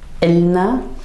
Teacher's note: And in Shami, in Levantine dialect, we would actually add a little glottal stop at the beginning, so it would sound more like Elna.